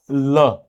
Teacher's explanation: जीभ के दोनों ओर से यहां गालों को सूते हुए क्या करेगी, बाहर आएगी, दोनों पार्श्वों यानी बगल से निकल जाती हैं, इसलिए ये पार्श्विक व्यंजन कहलाता है।